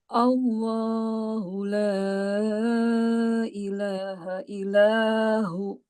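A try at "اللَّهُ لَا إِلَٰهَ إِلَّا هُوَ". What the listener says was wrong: Illa. Tasydidkan. Illa huwa. berhenti, buat dia panjang sedikit, dua harakat, illahu, gitu. Allahu la ilaha illahu, gitu. Dua harakat.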